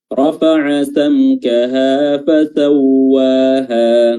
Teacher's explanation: Samkaha di sini mim sukun bertemu dengan kaf, ya, dibaca jelas mimnya. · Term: izhar syafawi